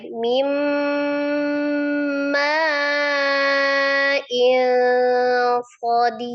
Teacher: Ma-nya panjangin dulu ya, ma-nya 4 ya.